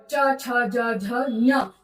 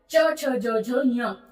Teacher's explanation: तो एक ही तालु, एक ही उच्चारण स्थान से बोले गए अक्षरों को हम एक वर्ग में रख लेते हैं। तो च वर्ग के सभी वर्ण तालु से बोले जा रहे हैं, इसलिए हम इसको बोलेंगे च वर्ग।